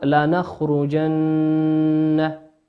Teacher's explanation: قوله سبحانه وتعالى لنخرجن، انظروا إلى النون في لنخرجن، نون مشددة تغن بمقدار حركتين.